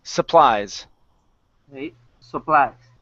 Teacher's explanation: the word is pronounced supplies the stress is on the end and instead of saying Sue we say s supplies supplies okay